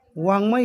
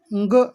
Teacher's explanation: या वर्णांचा उच्चार स्थानाबरोबरच नासिकेतून होतो, म्हणजेच नाकातून होतो. त्यांना अनुनासिके म्हणतात.